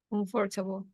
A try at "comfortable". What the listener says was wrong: Okay, but the stress, el acento está en com. Comfortable.